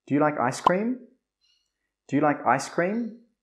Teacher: This is a yes or no question, so the intonation must go up.